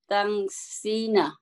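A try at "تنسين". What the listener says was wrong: তানসাইনা, কারণ স্নেহের উপরে তো জবর আছে আপনার, এই জবরটা চেঞ্জ করার কোনো দরকার পড়ছে না। ইয়ানসাইনা, ইয়ানসাইনা,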